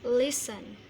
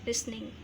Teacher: karena penekanan dalam pengucapannya di suku kata pertama listen, maka tidak usah di double huruf terakhirnya, langsung aja ditambahkan ing.